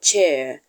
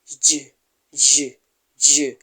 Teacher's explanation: they begin with a complete blockage of air flow and transition into a frea sound at first there is a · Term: affricates